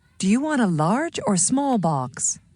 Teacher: Notice how voice rises on the first choice and falls on the second choice in her question.